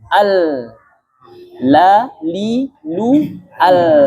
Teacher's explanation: Terlalu mengalir. Yang betul setengah-setengah. 50% mengalir, 50% tertahan.